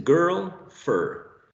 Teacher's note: The position of the tongue is central, right? Because this is right there in the central area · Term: mid central